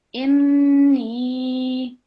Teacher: so 2 seconds and we are producing the nasal sound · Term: noon mushaddad